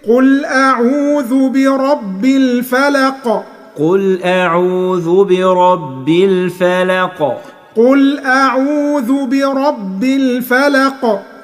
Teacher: يبقى الفلق لما تقف لازم تعمل قلقلة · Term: القلقلة